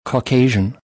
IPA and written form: kɑːˈkeɪ.ʒ (Caucasian)